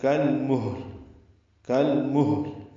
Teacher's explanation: اجتماع ساکنین ہو گیا، ہاں بھی اور لام بھی ساکن ہے، ہا پہ ہمس ہے یعنی اس میں سانس جاری رہے گی ، اور لام پہ اظہار ہوتا ہے، کل محل یعنی ہا · کل محل میں کاف باریک ہے، لام ساکن پہ اظہار ، میم کو ہا سے ملا دیں گے اور لام سے · کل محل یعنی ہا میں ہمس ہو، سانس جاری رہے اور لام پہ قلقلہ نہ ہو، لام پہ اظہار ہو